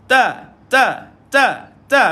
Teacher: disebut sebagai huruf istifal yang tak diangkat lidah